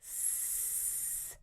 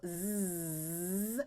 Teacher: Now, when I feel my throat, when I make the Z, I can feel my voice and I can feel my throat vibrating.